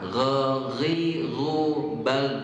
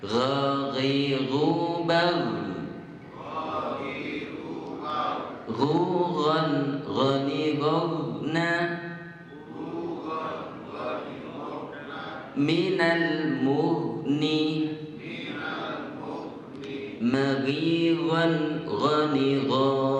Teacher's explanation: Ghain itu keluarnya dari mana, Pak? Ujung tenggorokan. Maka ketika huruf ghain ini disukunkan atau sukun, maka tidak boleh tenggorokan kita bergerak.